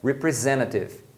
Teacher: A palavra representative, você pode pronunciar representative, pronunciando esse T, ou omitir esse T que vem logo depois do N